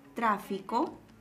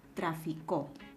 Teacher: Como por ejemplo, cuando observamos la palabra tráfico, el acento está en la antepenúltima sílaba, o la palabra traficó, el acento está en la última sílaba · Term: fonema acento